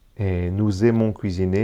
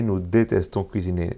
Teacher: Y nous détestons, ya no se pronuncia la S porque no hay ediciones.